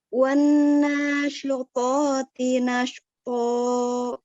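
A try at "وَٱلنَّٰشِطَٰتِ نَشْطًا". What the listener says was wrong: Ditahan sedikit lagi nun tasydidnya. Wan nasyitati nashqa.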